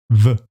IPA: v